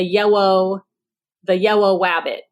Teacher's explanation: there is a clear substitution of a W for an r and an L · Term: gliding